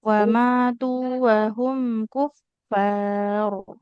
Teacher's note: Kalau Wa berhenti di situ, roknya tebal.